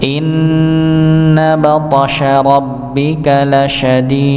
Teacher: Maka thnya dipantulkan, huruf dalnya juga dipantulkan.